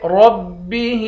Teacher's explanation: آخر میں ہا ہے، ہا کو ایک الف کی مقدار کھینچ کر پڑھیں گے، ہا کے نیچے کھڑی زیر ہے۔